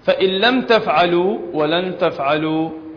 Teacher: الميم الساكنة مع التاء حكمها الإظهار